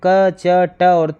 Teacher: जिन व्यंजन के उच्चारण में कम प्राण वायु प्रयुक्त होती है उन्हें अल्पप्राण व्यंजन कहते हैं। प्रत्येक वर्ण का पहला, तीसरा, पांचवा जो वर्ण होता है वो अल्पप्राण व्यंजन है तथा अंतस्थ, य, र, ल, व अल्पप्राण ही है।